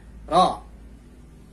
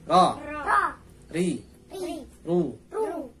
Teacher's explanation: Ro punya sifat takrir, yaitu bergetar. Artinya getarannya dibatasi.